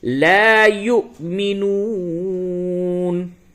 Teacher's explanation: واو کے اوپر حمزہ بنا ہوا ہے، یہاں پہ جھٹکے کے ساتھ ادا کریں گے